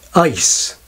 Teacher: 'ice' begins for many speakers with a raised quality, closer to the English hesitation vowel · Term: Canadian Raising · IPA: [əi]